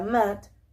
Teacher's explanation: una vocal medio abierta, delantera, que se emite sin redondear los labios